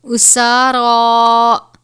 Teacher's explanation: سین اور را کے اوپر کھڑا زبر ہے، اس کی مقدار 1 الف کے برابر ہے